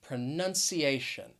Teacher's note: it has five syllables the stress is going to be on that fourth syllable that a pronunciation the first two syllables have that schwa sound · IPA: prəˌnʌn siˈeɪ ʃən